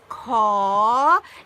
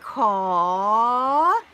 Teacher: So when you pronounce caw, it's rising and then drop down a little bit